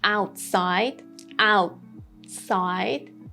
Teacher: I didn't say the T sound.